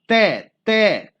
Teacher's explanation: ठीक है, और जो तय तय बोलोगे तय होता है दंत्य। जब आप तय बोलोगे तो आपकी जो जीभ होती है वो दांतों में से टच होगी और जो हवा का मार्ग निकलने का होगा उसको अवरुद्ध करेगी।